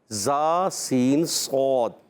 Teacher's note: زبان کی بالکل باریک نوک اور ثنائے سفلا و ثنائے علیہ، یعنی دونوں دانتوں کے اندرونی کنارے سے ادا ہوتا ہے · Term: حرف صفیریہ